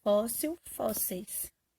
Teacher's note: Fóssil é paroxítona, a penúltima sílaba mais forte é fó. E termina em il, então eu vou trocar por eis.